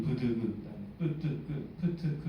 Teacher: 이제 우리가 알고 있는 바로는 VOT가 이 세 소리를 구분하는 그 가장 큰 프라이머리 큐가 됩니다. 그래서 된소리의 VOT가 가장 작고요. 그 다음에 예사소리, 그 다음에 거센소리가 됩니다. 빠 하면은 입이 열리자마자 이게 성대가 진동하기 시작하지만 파 하면은 파 이렇게 조금 딜레이가 있죠.